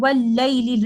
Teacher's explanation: So basically in this word, the Saakin lam is followed by a voweled lam, and the first lam has completely merged into the second lam, and this is idgham ash-shamsi happening here.